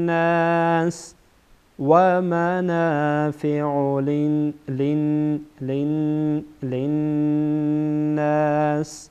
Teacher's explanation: اینجا هم غنه میشه چرا که نون مشدده